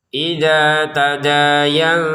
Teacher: Nun sukun yang diikuti ta dibaca dengan ikhfa (nasal/tersembunyi).